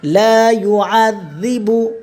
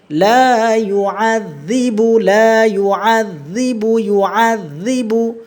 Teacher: ঠিক আছে, মাখরাজ থেকে, মাখরাজ 13 নম্বর মাখরাজ, যেইবার আগা সামনের উপরের দুই দাঁতের কি আগার সঙ্গে লাগাই আমরা উচ্চারণ করব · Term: জালের উচ্চারণ নরম